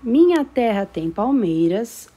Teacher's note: quando eu digo minha terra tem palmeiras a minha sílaba tônica que é o mei